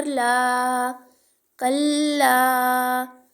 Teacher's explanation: الف سے پہلے زبر الف مدہ ایک الف کا ٹائم دیں گے